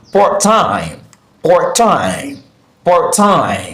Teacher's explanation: Since it's a compound adjective, we have the stress syllable on the second word, so we are going to pronounce it part-time, part-time, part-time.